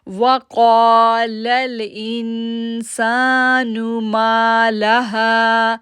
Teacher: قا کو ہم کھینچ رہے ہیں کیونکہ موٹا بھی ہے اور الف سے پہلے زبر بھی ہے